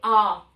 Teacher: दीर्घ स्वर जिसको बोलने में 2 गुना समय लगता है